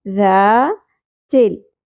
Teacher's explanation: ذال نرمی سے ادا ہوگا، زبر کے ساتھ الف، حرف مدہ ہے، 1 الف کے برابر کھینچنا ہے۔ ذا تل، چ لام زیر تل، ٹھیک ہے؟